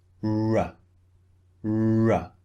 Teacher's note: The mouth is not rounded, but the lips are pushed out from the mouth.